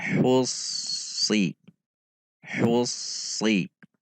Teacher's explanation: Perhatikan juga sifat dan makhraj huruf shad, yaitu dengan menegangkan pangkal lidah dengan titik makhraj yang sama dengan huruf sin